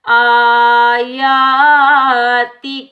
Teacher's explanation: آیاتی کا، حمزہ کے اوپر بھی کھڑا زبر ہے اور یا کے اوپر بھی کھڑا زبر ہے، تو ان دو کھڑا زبر کو ہم ایک ایک الف کی مقدار میں کھینچ کر ادا کریں گے